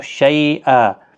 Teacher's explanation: اور جب وقف کریں گے تو میں نے بتایا تھا حروف مدہ یا کھڑی حرکات کے بعد جب ساکن حرف آتا ہے وقف کی حالت میں تو 3 سے 5 الف کی مقدار کے برابر کھینچ کر وقف کریں